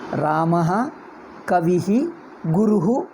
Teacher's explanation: ಆ ನಂತರ ವಿಸರ್ಗ ಬಂದರೆ ಅಹ ಈ ನಂತರ ವಿಸರ್ಗ ಬಂದರೆ ಇಹಿ ಉ ನಂತರ ವಿಸರ್ಗ ಬಂದರೆ ಉಹು ಹಾಗೆ ಹೇಳ್ತೀವಿ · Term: ವಿಸರ್ಗ ಉಚ್ಚಾರಣೆ, ವಿಸರ್ಗ ಉಚ್ಚಾರಣ